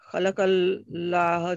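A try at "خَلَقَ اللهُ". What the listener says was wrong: If we say khalaqallah, then this means someone created Allah, knows billah. If we say khalaqallahu, then this means Allah created.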